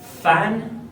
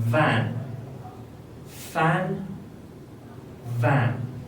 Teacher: the former in this case is voiceless and the latter is voiced